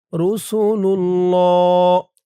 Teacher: ওফ করার কারণে লামের উপরে খারা জবর এক আলিফ টান তিন আলিফ হয়ে গেছে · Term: মধ্যে আরজি